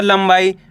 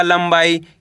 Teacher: अनुस्वार की मात्रा है, इसके बाद वाला अक्षर बा, ये रहा बा, तो अपन ने यहाँ पे आधा माँ पढ़ दिया